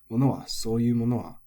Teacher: Kaimono is flat, but one thing to look out for is mono on its own is odaka, final high